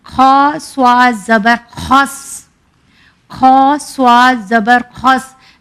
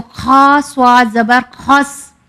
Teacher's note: کھا ہمارے پہلے حلق کے پارٹ سے ادا ہوتا ہے